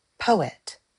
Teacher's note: Trochaic, stressed and unstressed.